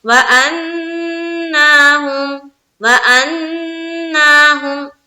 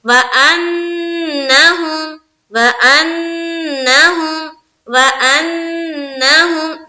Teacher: जब नून को second time जो पढ़ेंगे वो जबर की हरकत के साथ जो पढ़ेंगे हम, तो उसमें खींचाना नहीं चाहिए